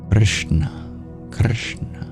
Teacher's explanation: try dropping the I, just a pure R sound, curl your tongue back, Krishna, Krishna.